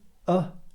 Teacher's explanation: it's the vowel sound that everybody uses but isn't taught so it's the uh sound